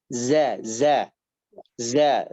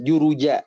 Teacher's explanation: Jadi zai itu ada sifat sofir namanya, artinya desisan. Cuman desisannya itu menyerupai suara lebah. Atau kalau kita ucapkan seperti suara huruf Z dalam bahasa Latin.